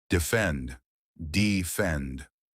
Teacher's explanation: 2 syllables. Stress on the second part